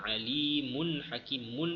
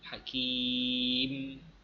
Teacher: Tetapi pada fizikal ataupun pada zahirnya kita tak nampak ada nun pada tulisannya. Kalau kita sambung alimun hakimun itu ada, tapi kalau kita berhenti hakim, dah tak bunyi dah dia punya tanwin tersebut.